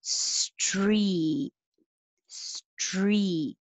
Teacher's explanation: pulling it back sure and then my r is pulled back my tongue has to pull down so that the tongue can curl back without touching the top · My tongue goes back here for the T. But I'm not going to release the final T at like street. I'm just going to hold it in that position.